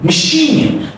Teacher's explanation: So imagine there is no A, it's like a Schwa sound, okay? Machine is unstretched, okay?